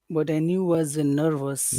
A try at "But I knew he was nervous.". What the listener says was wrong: Don't forget the E. That's the only reason I know you're saying he, because you have a big long E there, but I knew he. But I knew he was nervous.